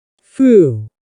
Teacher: What happens to that final D? We just cut it off. Foo, and we're cutting off the next D.